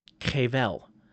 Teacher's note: that little throat clearing in there, that guttural sound